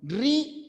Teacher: la separación se produce debido a que el acento o mayor fuerza de voz recae en la vocal cerrada